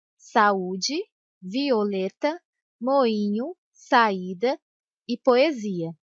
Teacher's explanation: a sequência de duas vogais numa mesma palavra mas em sílabas diferentes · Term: hiato